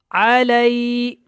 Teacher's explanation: لئی کو زیادہ لمبا نہیں کرنا کیونکہ یہ یا لین ہے